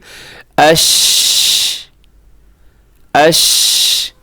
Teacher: آگے شین ہے, اور شین کے اندر جو صفت پائی جاتی ہے اسے کہا جاتا ہے تفشی, یعنی شین کی ادائیگی میں آواز خوب پھیل جانی چاہیے